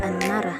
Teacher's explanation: bunyi T dalam kata antara berubah menjadi N karena pengaruh bunyi N di dekatnya, sehingga antara diucapkan sebagai anara. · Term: asimilasi fonemis